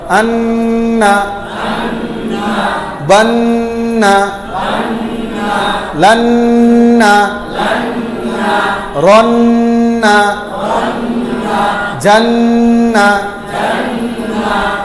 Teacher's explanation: হরফ 29টার যেটাই হোক, নুন আর মিমের উপর যদি তাজদিদ হয়ে যায় তো নাকের ভিতর ঢুকায়া গুন্না করতে হবে। 17 নম্বর মাখরাজ, নাকের বাসি হইতে গুন্না উচ্চারিত হয়। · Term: ওয়াজিব গুন্না